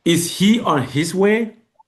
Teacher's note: So questions that are answered by yes or no, or a statement of surprise. So pitch falls slightly, then jump up on the last word of the sentence. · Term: rising intonation